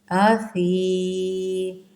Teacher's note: فی کو نرمی کے ساتھ ادا کرتے ہیں، سیٹی بالکل نہ آئے، نہ ہی موٹا کرنا ہے، نہ ہی صاد کی طرح اس کو کرنا ہے۔